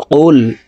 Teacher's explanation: কফ হরফের উচ্চারণ জিহ্বার গোড়া তার বরাবর উপরের তালের সঙ্গে লাগাইয়া উচ্চারণ করে পড়ব। কফ লাম পেশ কুল।